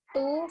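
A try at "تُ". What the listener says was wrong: Jangan bilang tuh ya, tak. Ingat kalau huruf satu itu diejak ya, jadi taknya fa'ilnya.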